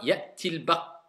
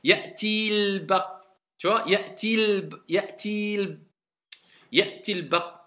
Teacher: La voyelle longue, on ne la prononce plus. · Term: liaison